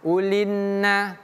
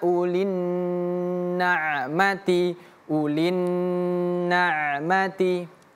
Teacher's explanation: Jangan cepat-cepat ulinna. Tapi ulin agak ditahan lebih lama